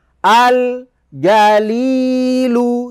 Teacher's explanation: lamnya mempunyai harakat sukun dan tetap dibaca walaupun lamnya sukun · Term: izhar Qomariah